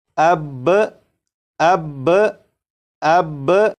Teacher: آپ سوچیں گے یہ شاید مشکل ہے، بالکل مشکل نہیں، آپ اس کو صرف سمجھ لیں کہ جب با کو پڑھیں گے، با کو پڑھنے کے بعد آواز کو ختم نہیں کریں گے، بلکہ آواز کو تھوڑی دیر کے لیے روکیں گے۔ آواز کو تھوڑی دیر کے لیے روکنے کے بعد جب آپ با کو پڑھیں گے تو یہ بالکل صحیح پڑھا جائے گا، جیسے اب، اب، اب۔